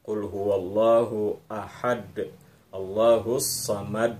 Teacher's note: ada bunyi memantul di huruf Dal